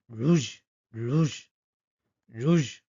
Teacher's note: ফরাসি ভাষার আর কিন্তু মানে গলার পেছনে জিভের গোড়া দিয়ে হালকা ঘষে রুজ, রুজ, রুজ, ঠিক আছে?